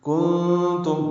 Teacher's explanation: نون ساکن کے بعد تا آنے کی وجہ سے اخفا ہے،